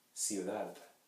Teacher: when the D is the last letter of a word, and when it appears before vowels, it is pronounced as the soft TH. So the softest TH you can imagine.